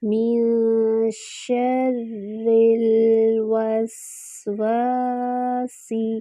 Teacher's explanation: نون پہ اخفا ہو رہا ہے اور اخفا کی باریک آواز آئے گی اور 2 حرکات برابر کریں گے اخفا۔ من شر، شین میں جو ہے شاورنگ ساؤنڈ ہوتی ہے، شور کی آواز آتی ہے۔